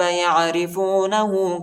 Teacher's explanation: ہاں پر الٹا پیش آئی، اس کو ایک الف کی مقدار تک کھینچیں گے